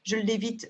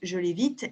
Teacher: the L will be longer when it's a pronoun rather than when it is the first consonant of the word